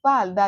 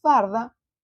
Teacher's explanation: en vez de decir falda, dicen farda, se corresponde con la región oriental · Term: trueque